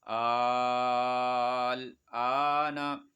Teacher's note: تو جزم ہو یا تشدید ہو تو کیا ہو جائے گی، وہ مد لازم ہوگی. اس کو 3 الف سے زائد 5 الف تک کھینچنا ہے، 4-5 الف تک اس کو کھینچنا ہے.